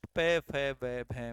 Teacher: प वर्ग का उच्चारण स्थान ओट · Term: ओष्ठ